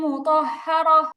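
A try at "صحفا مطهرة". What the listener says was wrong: মুতাহহারা এরকম না, মুতাহহারা। মু টান হবে না, মুতাহহারা।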